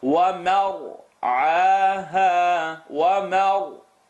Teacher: Meme is light, ra is going to be heavy because there's a line on top of the meme connected to the ra.